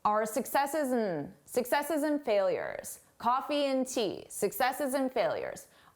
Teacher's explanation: when and comes between 2 nouns or even 2 verbs, we reduce it to n.